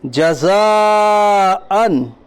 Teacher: حرف مد کے بعد حمزہ اسی کلمے میں ہے، اس لیے مد متصل ہوگا۔ مد متصل کو 2 ڈھائی 4 الف کے برابر کھینچ کر پڑھیے۔ حمزہ کے اوپر 2 زبر کی تنوین ہے، تنوین اور نون ساکن کی آواز یکساں ہوتی ہے۔